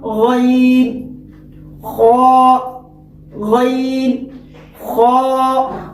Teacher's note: جو اب اس بورڈ میں جو غین اور خا، غین کا مخرج ہے ادنائے حلق، یعنی حلق کا جو منہ کی طرف والا جو حصہ ہے، اس سے ہم غین اور خا کی ادائیگی ہوتی ہے۔